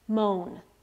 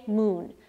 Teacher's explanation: that used to be pronounced moan today moon so o changed to oo · Today, moon. So O changed to U, it raised. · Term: great vowel shift